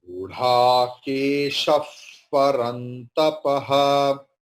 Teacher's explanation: Visarga will be like Fakara because Pa is there.